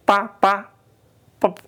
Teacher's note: Kalau p pa pep enggak keluar anginnya.